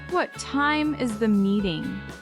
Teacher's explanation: Time and meeting carry the weight. The rest of the sentence is lighter.